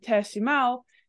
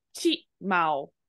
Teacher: rather than saying te shimau, it will be slurred into chi mau or chao or something like that, which is literally a slurring from ti te.